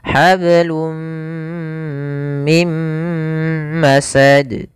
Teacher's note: awalnya hablun, karena ketemu mim masuk ke mim, tanwinnya hilang. Hablum mim masad. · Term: idgham bi gunnah